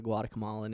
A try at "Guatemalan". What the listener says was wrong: Guatemalan. Where are you adding? You're adding syllables.